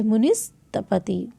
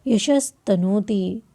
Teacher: तो ये प्रथम और द्वितीय वर्ण और ऊष्म वर्ण, यानी कि विसर्ग के बाद यदि खर प्रत्याहार हो तो विसर्ग के स्थान पर क्या हो जाता है? स आदेश हो जाता है।